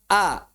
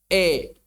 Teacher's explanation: Jadi jika kita ilustrasikan seperti ini, misalnya, ini fathah, ini kasrah, fathah atau alif, kasrah atau ya maddiyah, yaul mad. Jadi yang disebut imalah adalah mengarahkan fathah ke arah kasrah.